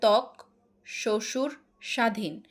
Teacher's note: শব্দের আদিতে ব ফলার উচ্চারণ হয় না।